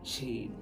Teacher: জিহ্বার মধ্যখানটা উপরে তালুর সাথে লাগিয়ে শিন উচ্চারণ করা হয়,